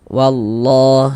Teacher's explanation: cara membacanya itu dari wa langsung masuk ke huruf syamsiyah, yakni huruf lam ini. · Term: idgham syamsiyah